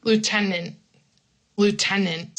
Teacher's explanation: I stop abruptly so that people can kind of know that there's a t there.